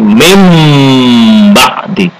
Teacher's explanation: Membacanya enggak min ba'di tapi mim ba'di, tidak ada n tapi diganti, ditukar dengan m jadi mim ba'di. Dan dengung, tidak cukup mim ba'di tapi mim ba'di. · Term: bacaan iqlab